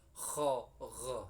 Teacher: tenggorokan yang atas, ujung tenggorokan yang dekat dengan lidah. Ini tempat keluarnya huruf ghain dan kha.